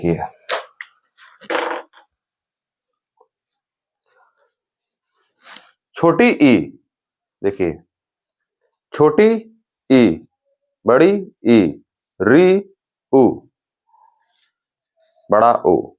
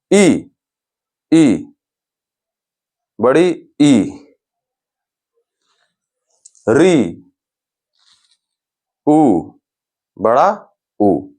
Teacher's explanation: इनको उच्चारण करने में हमारा जो मुख है वो पूरा नहीं खुल रहा है, मतलब बंद है, हमारा मुख बंद है। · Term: संवृत